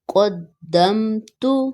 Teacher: یہاں میم ساکن بالکل نہیں کھینچی جائے گی